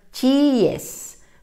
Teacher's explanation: tenemos que romper el diptongo con la e por tanto diría chiíes para que diga chiíes hay que colocar